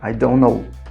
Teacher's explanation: Tá vendo que não pronuncia o T?